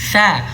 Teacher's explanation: Sa, ujung lidah dikeluarkan sentuh pada ujung gigi seri atas. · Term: huruf sa